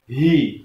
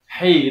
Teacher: hi itu di pangkal tenggorokan sini, jadi harus tebal. Hi, tidak boleh hi, itu bacaan yang salah.